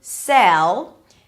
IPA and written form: sɛl (sell)